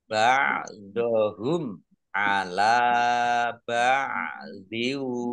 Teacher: mim sukun bertemu dengan huruf ain, bacaan idhar safawi dibaca jelas.